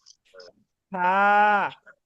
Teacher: উপরের দাঁত দিয়ে নিচের ঠোঁটের পেট মানে ঠোঁটের মাঝখানে একটু কামড় দিয়ে হালকা একটু কামড় দিয়ে এই ফার একটু বাতাস বের করে ফার উচ্চারণ করতে হয়